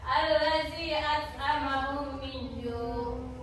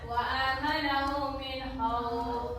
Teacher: Dengan demikian dapat disimpulkan bahwa disebut izhar misli apabila ada mim sukun bertemu dengan huruf mim. Cara membacanya adalah memasukkan huruf mim ke dalam huruf mim disertai dengan suara guna sekitar 2 ketukan. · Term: idgham misli